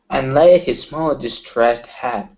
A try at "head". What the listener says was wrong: Now, right here instead of had, he. Close your mouth just a little bit more.